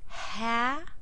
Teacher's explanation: All of these vowels are different from one another, but the second syllable vowel and the third syllable vowel, we're not even going to really pronounce those. We're going to really stick with that strong first syllable and make a nice ah sound.